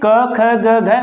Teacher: पहला क्रम हमारा क्या था, कंठ से, यानी कंठ से उच्चारित होता है, क वर्ग रखा